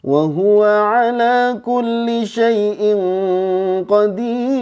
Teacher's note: Jadi komposisinya itu naik, datar, turun, terus turun lagi. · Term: irama bayati